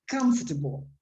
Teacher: it's always on the first syllable, so comfortable. That means that the second O practically disappears